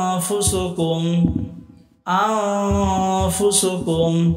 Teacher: সাকিন ও তানবিনের পরে একফার 15টি হরফের যেকোন একটি হরফ আসলে উক্ত নুন সাকিন ও তানবিনকে নাকের ভিতর লুকাইয়া গুন্নাহার সাথে পড়িতে হয়